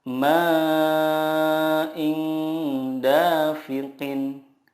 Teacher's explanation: ketika kita mendengungkan atau menyamarkan nun sukun itu, lidah kita sudah siap ke huruf berikutnya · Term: ikhfa hakiki